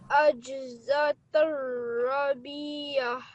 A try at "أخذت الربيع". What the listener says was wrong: This is a kha. And this is the alif of prolongation, alif madda. You have to prolong the ra.